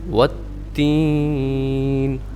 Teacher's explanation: زبان کی جو نوک ہے وہ اوپر والے سخت تالو کے ساتھ جا لگے گی, تب یہ نون ادا ہوگا